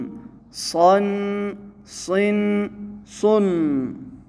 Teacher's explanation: صاد حروف مفخمہ میں سے ہے، وہ 7 حروف جو ہمیشہ پر پڑھے جاتے ہیں